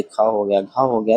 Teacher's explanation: तो क वर्ग में जो दूसरा और जो चौथा जो व्यंजन हो गया तो वह क्या होता है? महाप्राण होता है।